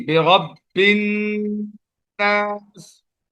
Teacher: را پر زبر ہے تو را کو پور پڑھیں گے